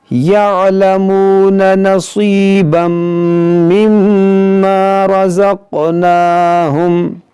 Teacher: دیکھیں نصی یہاں صاد ہے، نصیبم، یہ با میم دو زبر بم یہاں پر ادغام کریں گے، یہاں پر میم مشدد ہے، اس میں غنہ بھی کریں گے۔